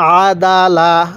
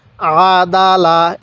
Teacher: আমি কিন্তু আইনটার উচ্চারণের সময় গলার মধ্যে চাপ দিছি, আদালা, এরকমভাবে শিখব।